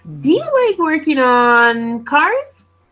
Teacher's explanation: cars might go up at the end to emphasize the word cars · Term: intonation